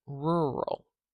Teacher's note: the schah is a very short duration vowel sound